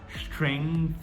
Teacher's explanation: A princípio, esse G ele não é pronunciado, a gente vai falar strength, tá? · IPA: /streŋθ/